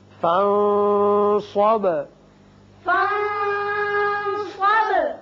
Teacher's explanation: نون پر اخفا، با کی صفت قلقلہ